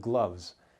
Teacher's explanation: the letter S might make the Z sound which is voiced you can hear the sound at the end of gloves and